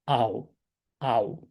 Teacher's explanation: 이렇게 되고 그다음에 오메가랑 어 사가 붙어서 오이 이렇게 되고요 그다음에 알파랑 실론이 붙어서 어떻게 되냐면 아가 아니라 아우 됩니다